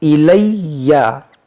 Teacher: یہاں پر یا مشدد ہے، اس کو پڑھیں گے دو بار